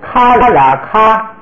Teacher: 是传统的这个读法，咱们也学一下啊。它是2个字母分别读了之后呢，把它拼起来，咔啦咔，咔啦咔。注意第2个字母这个啦呀，在那个后面没有声调。如果不标声调是什么呀？是轻声，好像咱们汉语里头不标声的话就是轻声，它读起来就是咔啦咔。 这个咔跟啦拼起来就是把那个咔声音延长一点